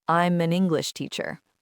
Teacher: Instead of I am, which is often pronounced slowly for emphasis, in casual speech, it becomes I'm, but when it's part of a phrase like I'm an English teacher, you often hear the M of am linking to the A of an, so it sounds more like I'm an English teacher.